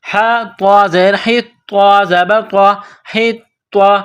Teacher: وقولو حطۃ نغفر لکم، حا کو طوا کے ساتھ ملانا ہے، طوا کے اوپر تشدید ہے تو طوا میں سختی کرنی ہے